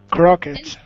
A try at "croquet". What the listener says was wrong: Okay, this is similar to bouquet, and you do not pronounce the T. Croquet. Croc.